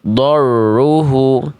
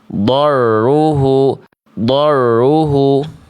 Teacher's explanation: Getarannya enggak jelas, getarannya tuh samar. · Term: getarannya samar